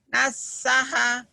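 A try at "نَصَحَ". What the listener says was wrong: Naso. Bukan nasaha. Huruf Jawa, huruf O.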